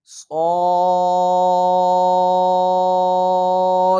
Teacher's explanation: یہ لفظ موٹا پڑھنا ہے اور سیٹی کی آواز بھی نکالنی ہے